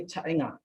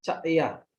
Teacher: Most of the dialects of the Garos have voice velar nasal nga as a progressive tense marker